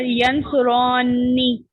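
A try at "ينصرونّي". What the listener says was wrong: ایک اور دو حرکت اور کھینچے. ایک حرکت اور کھینچے. دراصل آپ کو اس میں 6 حرکت کھینچنی پڑتی ہے.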